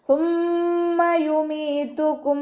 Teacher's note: സ ലൈറ്റ് ആക്കിയിട്ട് ഉച്ചരിക്കാൻ ശ്രദ്ധിക്കുക. നാവിൻ്റെ അറ്റവും മേലെ മുൻപല്ലിൻ്റെ അറ്റവും ചേർന്നിട്ടാണ് സ ഉച്ചരിക്കുന്നത്. കുറച്ച് എയർ പാസ് ചെയ്യണ സൗണ്ടും കൊടുക്കണം കേട്ടോ.